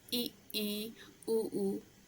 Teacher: अब जब मुख खुलने के आधार पे जो भी स्वर होते हैं वो 4 टाइप के होते हैं, जैसे कि समृत स्वर, अर्ध समृत, विवृत स्वर और अर्धविवृत। तो समृत स्वर का मतलब ये होता है कि जिन स्वरों के उच्चारण में मुख बंद रहता है।